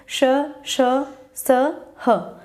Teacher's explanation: और संघर्षी व्यंजन, जिनको बोलने में संघर्ष महसूस होता है, ठीक है, जिनके बोलने में वायु जो है वो एक संघर्ष के साथ, ऊष्मा के साथ बाहर निकलती है